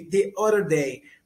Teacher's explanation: Você não fala esse T, você transforma o T em R praticamente, ou você muda um pouco o som do R. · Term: flap T